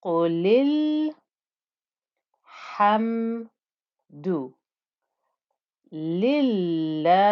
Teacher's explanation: if we join to that lam in the word Allah with a kasra, then the lam stays light, and the 2 count stretch, the hidden 2 count stretch, also remains light. · So this is where the 2 count stretch was. It was light because we joined to it with a letter with a kasra, and the 2 count stretch that remained also was light.